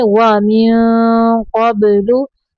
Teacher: नून साकिन पे इख्फा का कायदा करेंगे।